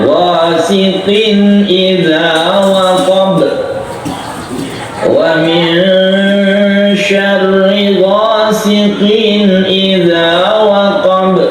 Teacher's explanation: Tanwin bertemu dengan hamzah idhar. Jadi harus, kalau idhar harus ketahuan atau jelas suara tanwinnya.